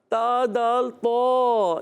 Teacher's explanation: دال کا مخرج زبان کا سرا اور اوپر کے دانتوں کی جڑوں سے، تا دال طا یہ ادا ہوتے ہیں حروف نطقیہ۔